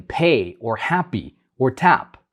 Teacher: the first one is by labial and it's both lips coming together and creating a sound